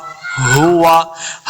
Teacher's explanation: ہا کو لفظ کے ساتھ پڑھیں گے، حلق کے نچلے والے حصے سے ادا کرنا ہے اس کا مخرج